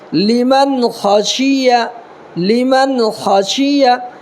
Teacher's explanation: خا زبر خا، اس کو تھوڑا پر کر کے پڑھیں گے